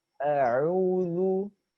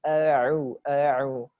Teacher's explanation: Ain, makhrajnya di tengah kerongkongan, bukan di hidung.